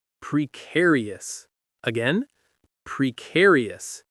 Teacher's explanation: It has four syllables and the stress is on the second one. Care. You have to really emphasize that part.